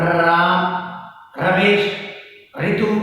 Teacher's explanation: जाहिर सी बात है वो ड्रम इस तरह से रोल करता हुआ नीचे आएगा। रे का जब उच्चारण करेंगे तो जीभ ऊपर मूर्धा की ओर से टर्न लेती हुई, मुड़ती हुई, लुढ़कती हुई सी जान पड़ेगी। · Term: लुंठित